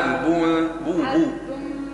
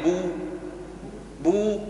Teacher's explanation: رقق الباء وضمها قولي بو